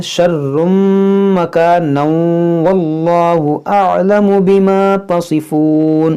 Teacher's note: اگر ملا کر پڑھنا چاہیں تو پھر تنوین کے بعد واو ہے ادغام کریں گے